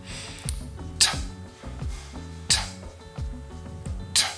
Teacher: t is the front part of the tongue which touches that gum ridge just above your two front teeth